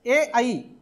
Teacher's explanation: आता या कंठ तालव्यामध्ये पुढचे दोन स्वर येतात कुठले, ए आई, आणि याच्यामध्ये कोणतंही व्यंजन येत नाही. हा कंठ आणि तालव्य या दोघांच्या मदतीनं ए आणि आईचा उच्चार होतो.